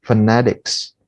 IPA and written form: fəˈnet.ɪks (phonetics)